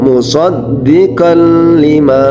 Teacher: Tertulisnya musaddiqan lima karena dimasukkan huruf baca tanwinnya dimasukkan ke huruf idgham bila gunnah menjadi musaddiqan lima ya, jadi tanwinnya ini dimasukkan ke huruf lam